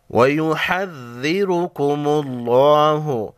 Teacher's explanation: را پر پیش ہے، را کو موٹا پڑھیں گے، لفظ اللہ کے لام کو موٹا پڑھیں گے۔